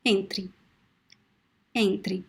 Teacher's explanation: The last vowel is very weak. You see that the first one is strong. Entre is the stress of the word is at the beginning.